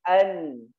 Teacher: Nun dimasukkan ke hidung, an. Nah, itulah yang disebut dengan tidak sempurnanya ditahan dan tidak juga dilepas suaranya. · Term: gunnah